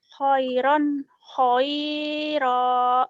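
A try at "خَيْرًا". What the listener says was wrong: Bukan, nggak ada yang panjang. Khoinya lin kan ini mah. Khairan, khairo. Yang panjang ujungnya doang ya, Bu ya. Khairo, ini lain. Karena ada dua patah.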